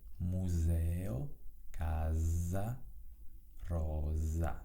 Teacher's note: Una S che precede una consonante e una S che segue una consonante si pronuncia S. La S invece si pronuncia in maniera sonora, quindi Z, quando si trova tra due vocali, quindi quando è preceduta e quando è seguita da una vocale contemporaneamente, per esempio nelle parole museo, casa, rosa.